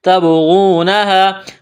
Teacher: با ساکن ہے، با پر قلقلہ کریں گے، غین کو موٹا کرنا ہے، واو مدہ ہے، الف کے برابر کھینچنا ہے۔